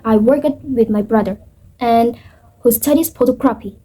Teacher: I use rising intonation to connect ideas like in I work it with my brother and who studies photography.